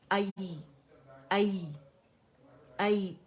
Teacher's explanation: او, او, او, او, آئی, آئی, آئی, اسے مشدد نہیں بنانا ہے, آئی ایک کاؤنٹ کے لیے